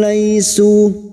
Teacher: fathah bertemu ya sukun kita lunakkan. Laisu, su duma diikuti waw sukun 2 harokat mad tabi'i.